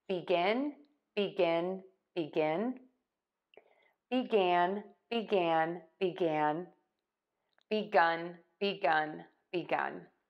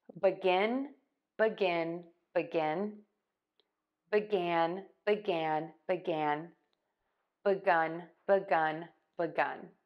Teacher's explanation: you have a couple of choices here for syllable number one you can say B with the long e or you can say ba with the short ah